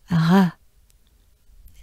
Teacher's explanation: the french r is mostly nothing more than a breath um and to achieve it you just keep your tongue at